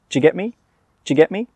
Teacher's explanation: We don't say do you, we say j.